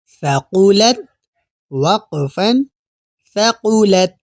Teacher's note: یہاں پہلا حرف سا ہے تو سا پڑھتے ہوئے ہماری زبان کی نوک ہلکی سی دانتوں کے باہر رہے گی